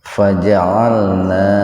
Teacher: huruf alif lalu diganti dibadal dengan harokat berdiri, dibaca panjang dua ketukan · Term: mad badal